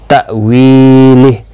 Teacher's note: حمزہ ساکن کو جھٹکے کے ساتھ پڑھا جائے گا ، وی یا مدہ ہے اور ہا ساکن پڑھا جائے گا